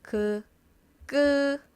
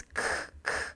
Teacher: This is g g More power than g and then more air, then it becomes k k